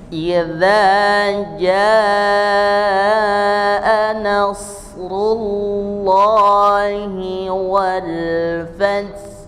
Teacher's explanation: ha yang sukun itu adalah seperti orang berbisik tapi dari tenggorokan